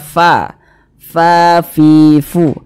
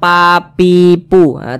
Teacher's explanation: Ketika kita mengucapkan huruf fa, maka ada napas yang mengalir karena huruf fa merupakan salah satu huruf yang memiliki sifat hamas.